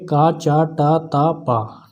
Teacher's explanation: कंठ, पहले कंठ आता है, फिर तालु आता है, फिर मूर्धा आता है, फिर दंत आता है, फिर ओष्ठ आता है। ठीक है, कंठ पे का है, तालु पे चा है, ठीक है, मूर्धा पे टा वर्ग है, दंत पे ता वर्ग है और ओष्ठ पे पा वर्ग है।